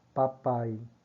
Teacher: na palavra papai, o I quase que você não escuta, fica morrendo, né? Você só escuta o A desse A, né? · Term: semivogal